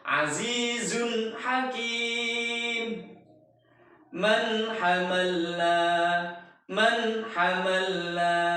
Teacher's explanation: Jadi kita membaca nun sukunnya, tidak mendengungkannya. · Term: idhar halqi